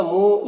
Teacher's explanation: واو ساکن سے پہلے میم کے اوپر پیش ہے تو واو مدہ ہوگا، ایک الف کے برابر کھینچیں گے